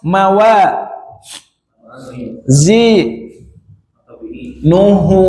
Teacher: Kalau berhenti nuh jadi sukun. Kalau dia dibaca lanjut dia hu-nya panjang. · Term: masilah qasirah